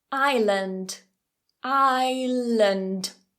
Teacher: So that second one isn't lAnd, it's not strong, it's a schwa.